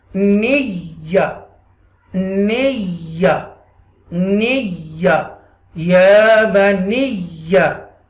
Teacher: Ba zabar ba, ya ba, and then this is the nun zair, a ni, connect with the ya mushadda with zabar with extra stress